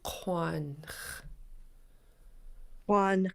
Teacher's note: And you just make a k sound. Since it's rounded with the W, then it will sound like quan.